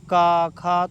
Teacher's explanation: क वर्ग की ध्वनियां कंठ से बोली जाती है